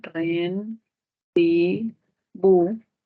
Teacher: rendibu en la u si hacemos separación silábica sería Ren bu sílaba tónica bu y se constituye una palabra aguda